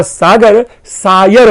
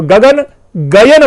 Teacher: शब्दों के मध्य के जो व्यंजन है उनके स्थान पर य श्रुति देखी जाती है।